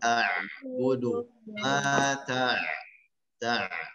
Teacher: pada huruf ain, ya, memanjang di pertengahan